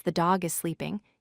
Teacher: in the sentence the dog is sleeping, you stress the word dog.